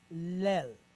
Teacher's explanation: the tzere, which is a long duration E-type vowel